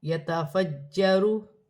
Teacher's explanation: جیم مشدد ہے، جماؤ کے ساتھ ادا کیا جائے گا